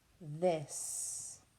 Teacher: We have a voiced TH.